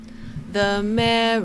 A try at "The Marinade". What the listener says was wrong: There's no O in Marinade. Marinade. The Marinade.